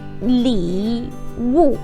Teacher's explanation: Keep in mind that the li. That one is a third tone. So sharp drop and then slow up.